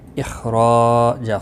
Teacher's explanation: خا مستعلیہ ہے، پر پڑا جائے گا، را الف مدہ ہے، ایک الف کے برابر کھینچ کر پڑھیں گے، اور وقف کی صورت میں جیم ساکن پڑا جائے گا، اس پر قلقلہ بھی ہوگا۔